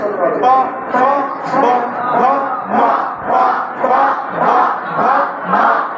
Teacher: এই পাঁচটা ঠোঁট উচ্চারণ করার সময় দুই ঠোঁট একত্র হবে।